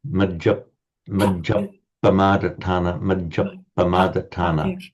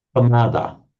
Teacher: So you hesitate over the p. You simply double it by saying Appamada. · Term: a double P